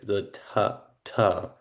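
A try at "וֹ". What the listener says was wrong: I think here, let me give you a hint here. think you're reading the Holem Vav vowel letter as a consonant plus vowel point. the consonant plus vowel point, it's actually a vowel letter, which makes a different sound than if it were consonant and vowel point. vote, the vowel letter just makes the O sound. So that where you have that Vav,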